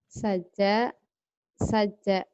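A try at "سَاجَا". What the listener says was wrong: panjang. Saja, saja, saja gitu panjang ya.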